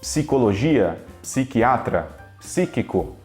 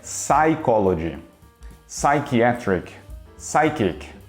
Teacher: a gente não fala o p começa direto no s